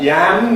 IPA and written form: jæm (yam)